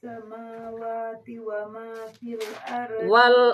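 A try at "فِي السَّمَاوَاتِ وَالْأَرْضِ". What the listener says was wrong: Enggak pakai wa ma.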